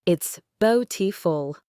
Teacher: The stress is on the first syllable.